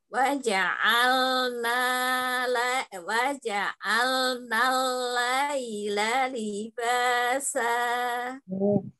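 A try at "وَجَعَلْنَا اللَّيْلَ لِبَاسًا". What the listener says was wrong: Layla, langsung jangan diayun ya ya. Layla, tapi layla, layla, coba. Waja'alna layla. Ya, tekan lamnya. Lam tasdidnya waja'alna lalla.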